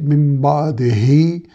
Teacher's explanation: दाल को बारीक, हा को उसके मखरज से मिन बादिही यानी हलक के निचले हिस्से से अदा करेंगे।